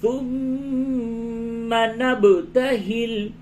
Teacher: میم مشدد ہے غنہ کیجئے اور با ساکن پہ قلقلہ ہوگا